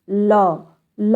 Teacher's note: यानी मुख द्वार बीच में बंद रहता है लेकिन हवा जो है दोनों रास्तों से निकलती है · हैं पार्श्विक व्यंजन होता कौन बच्चों ल ल होता है यानी जीभ हमारी जाकर ऊपर सट जा रही है तो साइड साइड से हवा के द्वारा ल शब्द ल वर्ण निकल रहा है बच्चों इसकी आवाज इसलिए इसे हम पार्षिक व्यंजन कहते हैं पार्श्विक